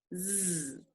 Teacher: That's a continuous sound and it's voice. Put your hand on your throat.